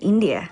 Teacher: she uses a rising intonation to express the afterthought India